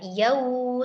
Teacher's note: wau sukun didahului oleh fathah pada huruf ya, yau, lengkapi harfulin wau sukun, dorong kedua bibir ke depan